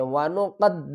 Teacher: قاف کو سختی کے ساتھ دال کے ساتھ ملائیں گے